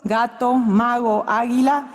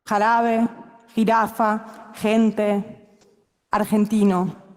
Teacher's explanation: que a la G le quede el sonido suave, gato, mago, águila, y que la J retenga el sonido áspero, jarabe, jirafa, gente, argentino.